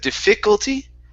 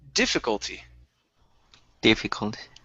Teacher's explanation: okay the stress is at the very beginning